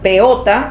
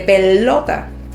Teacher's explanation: la L la está omitiendo completamente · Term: dislalia por omisión